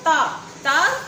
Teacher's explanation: जीभ जो है वो किसको स्पर्श कर रही है दांत को। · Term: दंत वर्ण